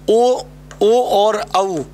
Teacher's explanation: ओ और औ जो होता है इसका उच्चारण स्थान होता है वो आपका कंठोष्ठ होता है, क्या होता है, कंठोष्ठ।